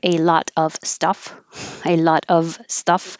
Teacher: but it sounds like u v and the vowel uh of a lot of times you don't hear the v at all because it's just shortened to uh